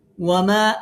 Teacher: ওয়ামা মাতে তিন আলিফ মাদ